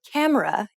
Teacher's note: you put stress on ka and say it for longer than the other syllables of the word camera